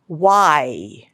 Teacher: So it is a glide sound. And it is palatal sound. That means the sound is produced somewhere in the palate area.